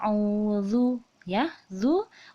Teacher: Jadi membacanya itu auzu ya, zu, ujung lidah kita keluar ya. Zal itu makharijul hurufnya, yaitu ujung lidah ke ujung gigi seri atas.